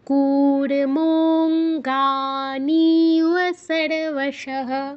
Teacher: এখানে ও এর উচ্চারণটা করতে হবে মো এর পরে, মোকে প্লুত করে তারপর ও এর উচ্চারণ।